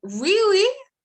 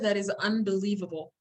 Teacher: We're not stressing word as much as we're actually changing the pitch of our voices, or I'm changing the pitch of my voice to go up